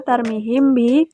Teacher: Pada lafaz kedua, tarmihim bi hukum tajwid ikfa syafawi karena mim mati him bertemu huruf ba dibaca samar dengan dengung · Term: ikhfa syafawi